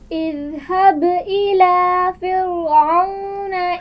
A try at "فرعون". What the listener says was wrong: فرعون را کو باریک پڑھنا ہے.